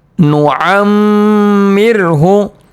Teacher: وَمَن نُعَمِّرْهُ، نُعَمِّرْهُ، میم کے اوپر تشدید آ رہا ہے، 1 الف کی مقدار گنہ ہوگا، اور را ساکن سے پہلے زیر آ رہا ہے تو را ساکن کو باریک پڑھیں گے